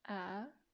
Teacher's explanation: you raise up your voice it's kind of like when you're asking a question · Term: rising tone